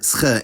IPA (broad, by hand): sχ